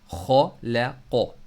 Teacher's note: खौ को अपर थ्रोट से पढ़ना है